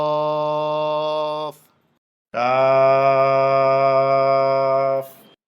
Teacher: জিহ্বার গোড়ার একটু আগে তালুতে লাগবে, স্বাভাবিক উচ্চারণ হবে, শেষে উপরের দাঁতের আঘাত নিচের ঠোঁটে লাগিয়ে যাবে।